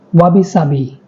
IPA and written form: ˈwɑːbi ˈsɑːbi (Wabi-Sabi)